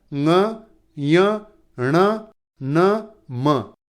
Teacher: ये नाक की सहायता से बोले जाते हैं, इसलिए इन्हें अनुनासिक वर्ण कहते हैं।